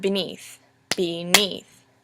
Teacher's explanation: Beneath also has two syllables. However, it starts off with an unstressed and ends with a stressed. Beneath, as opposed to beneath.